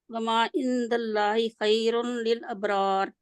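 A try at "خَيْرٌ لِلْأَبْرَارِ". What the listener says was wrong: रुन अभी भी रुन लिल आप कहते हैं, रुल लिल, लिल नहीं है लिल,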